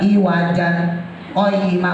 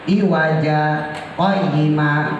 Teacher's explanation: Berhubung ada sakta, maka kita lanjutin iwaja berhenti tanpa nafas, qoyima. Tapi cara bacanya tetap matiwat, iwajanya tetap dibaca iwaja.